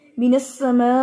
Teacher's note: जी अभी आप ये देखें कि मीनस समा, अब एंड पे क्या है, हमजा है, स्टॉप में हम हमजा को क्या करने लगे, साकिन। तो यहां पर हमजा साकिन की आवाज थोड़ी सख्ती से आती है। आप बिल्कुल ऐसे नहीं पढ़ेंगे कि जैसे आवाज जो है वो फिजा में बुलंद हुई है समा और फिर उसकी एंडिंग का नहीं पता चला, ठीक है?